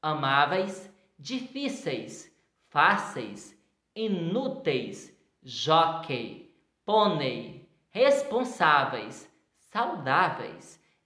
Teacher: nota-se aí que a penúltima sílaba tônica é a mais forte